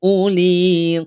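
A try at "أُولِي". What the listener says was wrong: setelah Hamzah ada huruf wau perhatikan tidak ada tanda sukunnya maka tidak perlu dibaca panjang ya tidak perlu dibaca panjang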